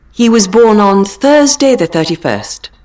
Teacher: So this should be British because you don't hear the re sound at all.